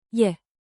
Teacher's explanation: With rising intonation, think 2 ascending notes.